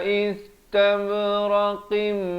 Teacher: qaf makhrajnya di pangkal lidah